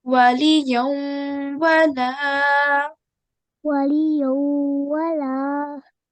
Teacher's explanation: So we can see over here we have ya with tanween. We have fatatan, which we will be joining to the waw mushaddad. But remember to make the sound of 2-second nasal sound. So we need to make the sound of tanveen as well.